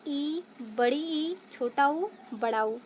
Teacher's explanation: तो मुख की आकृति के आधार पे स्वरों के भेद हमारे 4 प्रकार के होते हैं, जो मैंने यहाँ पर डिफाइन किया हुआ है, जिसमें हम पहला देखेंगे संवृत। वे स्वर जिनके उच्चारण में मुंह बहुत कम खुलता है, वो हमारे संवृत स्वर कहलाते हैं